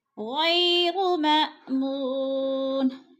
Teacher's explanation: ان عذاب ربهم غیر مأمون، غی پہ جلین ہے، جھٹکا بھی نہیں دینا اور لمبا بھی نہیں کرنا۔ ماء کو تھوڑا سا جھٹکا دینا ہے، حمزہ ساکینہ ہے، مو کو کھینچ کر پڑھنا ہے، وہ مدہ ہے۔